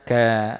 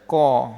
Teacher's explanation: Kaf huruf nipih, maka dibaca ka, tak baca ko. Ko tu tebal. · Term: mad nipih